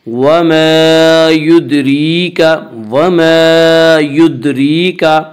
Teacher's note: یدریکا کی را کو باریک پڑھیں گے۔ اس کا قاعدہ ہے کہ را کے اوپر زبر اور پیش آئے تو را کو پر پڑھیں گے، را کے نیچے زیر آئے تو را کو باریک پڑھیں گے۔